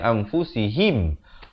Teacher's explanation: Ha baris bawah bunyi hi, bukan bunyi he. Jadi bila bertemu mim jadi him.